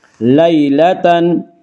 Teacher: یا لین کو نرم آواز کے ساتھ جلدی پڑھیں گے